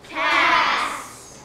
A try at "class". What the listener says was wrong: Class. Class. Some of you guys took out your l sound. You're not taking any sounds out. You're just changing.